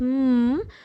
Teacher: when you pronounce this m you can feel the vibration in the throat so it is voiced right and just because it is voed the Ed here will